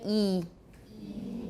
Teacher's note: that's our extreme High front vowel